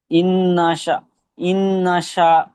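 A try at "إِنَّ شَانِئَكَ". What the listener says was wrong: তিনটি আলিফ মাধ্য এক আলিফ টান দিয়ে পড়তে হবে তো আপনার এক আলিফ হয়নি একটু কম হয়েছে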